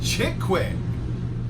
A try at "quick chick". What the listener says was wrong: Quick chick. Yeah, you said chick quick. Quick chick.